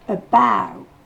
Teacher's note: On va encore du A vers le O.